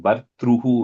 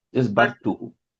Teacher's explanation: it's bartuhu, but I'm hearing bartruhu when you say it. There's no tra there.